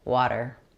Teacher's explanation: Water has a flap T. It sounds like a D.